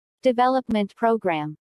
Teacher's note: Since these 2 words make a compound noun, the main stress falls on development.